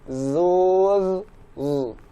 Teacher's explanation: huruf zai berharokat dhammah, berarti kita mulai tetap dari rahang tipis. Z, baru maju ke dhammah.